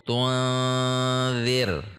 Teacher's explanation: Cara membacanya perhatikan, tu membulat, an sudah tidak membulat. Tunzir. Bedanya di sini dengan di sini, kalau ini tebal, kalau ini tipis karena didahului oleh kasroh.